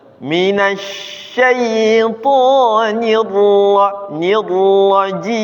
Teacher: Ra-nya fakhimir ra, tebalkan lagi ra.